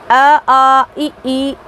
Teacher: मौखिक स्वर, जिनके उच्चारण के समय कोवा ऊपर उठकर नासिका विवर को बंद कर लेता है और सारी की सारी हवा मुख से ही निकलती है। हिंदी में अ, आ, ई आदि ऐसे ही स्वर हैं।